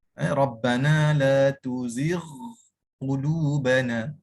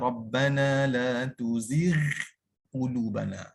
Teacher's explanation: Kerana huruf ghin dalam keadaan mana sekalipun ia tetap dibaca dengan tebal. Tak boleh dibaca dengan nipis.